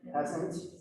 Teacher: It's got a little Z to it.